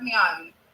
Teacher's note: alguns sotaques da Inglaterra também pronunciam o my, em maioria dos casos, pronunciam o my como me.